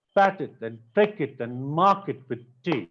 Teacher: So the stress syllable is coming after regular intervals of time. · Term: rhythm